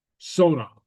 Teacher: So the broad vowel does not give us the sh sound.